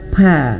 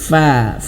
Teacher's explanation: ini disentuhkan bibir bawahnya ke gigi dari atas